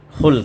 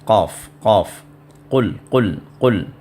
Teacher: ہے، قاف، قل یعنی حلق کا جو آخری جو حصہ ہے، یعنی حلق جہاں سے شروع ہوتا ہے اسی کے جوائنٹ پہ جو ہے وہ مخرج ہے جو قاف کا ہے